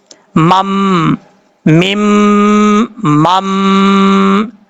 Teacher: دونوں پہ ایک ایک الف کی مقدار غنہ کریں گے کیونکہ دونوں مشدد ہیں